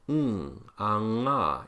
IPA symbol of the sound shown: ŋ